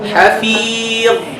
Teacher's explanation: when you stop on the dha, don't make qalqala.